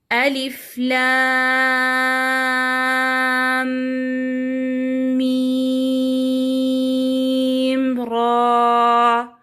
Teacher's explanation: مراعاة التفخيم في الراء وإعطاء الحروف الطبيعية مقدار حركتين مدها مدا طبيعيا